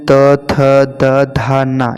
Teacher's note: त वर्ग में त, थ, द, धा, न ये दंत से उच्चारित होते हैं